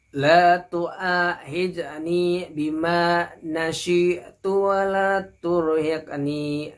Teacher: Huruf hamzah di depannya ada huruf alif, artinya harus dibaca panjang ya.